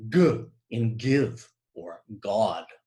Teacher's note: it's voiced good you're using your voice we're using your voice it's a plosive we stop the air and and then it explodes so it's a voice person but in this case we're stopping · in this case we're stopping the Sound by holding the back of our tongues up against the soft palate or the vellum and so we can indicate this fact we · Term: Velar voiced explosive